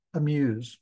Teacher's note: When you say amuse, you spend very little time on the A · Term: reduced vowel